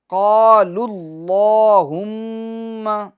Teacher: ہم میم مشدد کا غنہ کریں گے